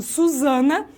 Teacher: Então, o Z seria vozeado e o som de S desvozeado.